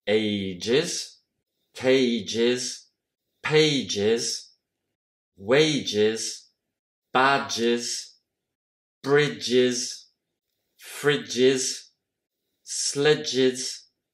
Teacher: Donc tous ces noms-là, au singulier, finissent avec le son j. Donc en pluriel, on utilise aussi le son is.